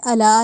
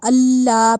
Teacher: لام کے اوپر شد کی وجہ سے اس کو سختی سے پڑھا ہے ہم نے